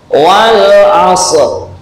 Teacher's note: Kemudian sifatnya shad adalah isti'la yang berbeda dengan sin. Nah, maka tengahnya lidah, nah ini diangkat ke atas.